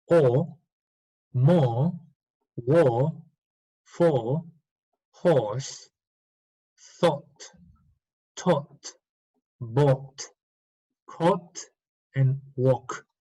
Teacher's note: It's deep, long, and comes from the back.